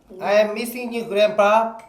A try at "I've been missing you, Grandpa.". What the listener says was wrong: 혀를 이렇게 굴리지 말고 그냥 소리 내는 대로 이거.